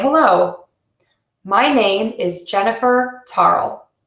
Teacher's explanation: You can hear I'm pausing in these slight phrase groups.